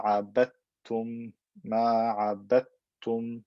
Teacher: Dal and ta come from the same makhraj, but they have different characteristics. So what happens, I merge them into one ta with shadda. It becomes ma عبدتم ما عبدتم.